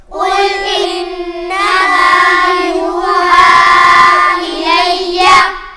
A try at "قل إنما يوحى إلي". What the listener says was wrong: انما کو زیادہ لمبا نہیں کھینچنا۔ قل انما یوحا الی یوحا الی قل انما یوحا الی